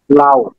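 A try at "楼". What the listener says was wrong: লাও না, লও। লও কোন টোনে আছে বলুন তো? সেকেন্ড টোনে।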